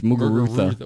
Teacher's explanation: You don't even pronounce a Z. It's pronounced a TH.